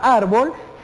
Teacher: viene siendo una palabra grave porque tiene el acento en la penúltima sílaba